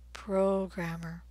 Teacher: the stressed vowel sound is o is in rows